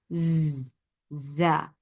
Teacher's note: makhraj of za is when your tongue is pushing your lower teeth.